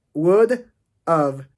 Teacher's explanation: Cuando juntamos would have, estamos utilizando la forma débil de have, que es of, would of. Pero la d está entre dos sonidos vocálicos, dos sonidos vibrados.